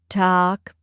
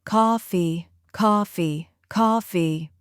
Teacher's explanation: talk in an American accent has a relaxed open sound. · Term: relaxed open vowel